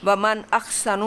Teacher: یہ اظہار کا قاعدہ ہے، یہاں پہ آپ نے نون پہ دیر نہیں لگانی، جلدی سے اس کو پڑھ دینا ہے